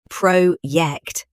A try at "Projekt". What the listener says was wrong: That's it. That's all Herr Becker wanted.